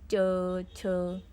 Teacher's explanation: च वर्ग जो है इसका प्रयोग तालुत से होता है। जीवा तालु से छूती है